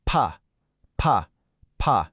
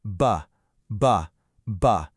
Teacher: You can call the P a whisper sound and the B the loud sound. Or you can tell your child to turn on their engine when they say it.